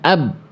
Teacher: Ini saya sedang tidak bunyikan kolkolahnya. Karena sifat syiddahnya itu tertunaikan ketika dia nempel makhrajnya. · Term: tertahan